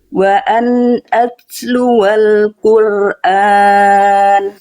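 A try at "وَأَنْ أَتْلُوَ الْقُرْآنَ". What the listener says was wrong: Tanya hati-hati, masih agak lebih dikit tadi. Ada bunyi S-nya. Wa an atluwal Qur'an.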